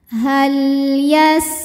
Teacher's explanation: dibaca lamnya Ini jelas tidak memantul tidak ditahan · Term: lam sukun